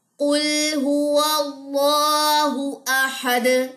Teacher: یہاں پہ بھی دونوں پیش گر جائیں گی اور دال کے اوپر جزم آ جائے گی, اس پہ ہم قلقلہ کریں گے, یعنی کہ آواز کے اندر ایک آپ کو باؤنس بیک جیسی فیلنگ آئے گی